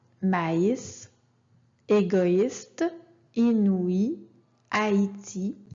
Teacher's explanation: deux voyelles doivent être prononcés séparément